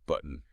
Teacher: That T in the middle often becomes a glottal stop. Button. That's that little catch in the back of your throat, like you're saying, uh-oh.